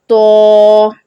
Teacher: زبان کی نوک اور جو سامنے والے دو دانت ہیں اس کی جڑ استعمال ہوگی. اس کو موٹا ادا کرنا ہے اچھے سے.